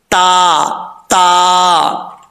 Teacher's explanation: जुबान की नोक ऊपर वाली दांतों की जड़ों से लगे तो ता पढ़ा जाता है बरीक